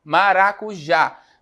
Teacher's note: maracujá mais forte é o já né então eu também estou diante de uma oxítona